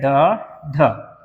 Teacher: जिव्या के ऊपर उठकर जो मूर्धा होता है उसको स्पर्श करते हुए अगर तुरंत नीचे गिरता है तो उसे बोलते हैं उत्क्षिप्त व्यंजन